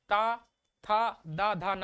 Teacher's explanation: जब आप त बोलेंगे तो आप देखिए जो हमारा जो दांत है वो हमारी जीभ में लड़ता है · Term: त वर्ग